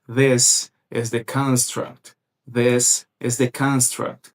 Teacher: Ele dá ênfase aqui na primeira sílaba, que é o construct